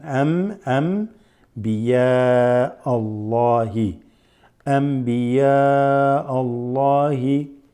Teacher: So you just remember to read Anbiya like that instead of Anbiya. You see, not with an N, noon, but with a meme, like an M sound. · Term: assimilated meme